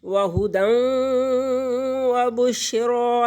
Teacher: تو نون تنوین کے بعد واو حروف یرملون میں سے آ گیا، تو یہاں پر غنّے کے ساتھ ادغام کریں گے،